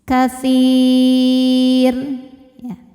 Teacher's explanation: jika kita berhenti di huruf ro ini ya, maka ro-nya ini disukunkan dan dibaca secara tarqiq